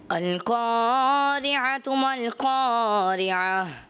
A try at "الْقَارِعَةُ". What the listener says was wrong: الف کی ادائیگی جب حرف مستعلیہ کے بعد الف آتا ہے اس کو موٹا پڑھتے ہیں. القا, آپ نے القاریۃ, تو 10 میں سے آپ کو 8 نمبر دیے جاتے ہیں.